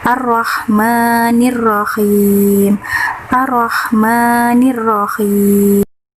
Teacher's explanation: Hukum tajwid yang ketiga adalah mad tobi'i karena huruf mim berharokat fathah bertemu alif. Cara pembacanya panjang 2 harokat.